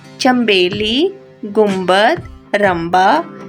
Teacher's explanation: لکھنے میں تو نون ہی لکھا جاتا ہے مگر پڑھا میم جاتا ہے. مثلاً چمبیلی گنبد رمبا ان لفظوں میں نون اور بے اکٹھے استعمال ہوئے ہیں لیکن یہاں پر یہ آواز میم کی دے رہے ہیں.